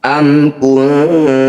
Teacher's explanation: Cara bacanya bunyi nun sukun dengungkan 2 harokat. Ketika dengung, lidah kita bergeser dari posisi nun sukun menuju tak. Am kunta, pergeseran lidah itulah yang disebut aqrab atau dekat. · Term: ikhfa aqrab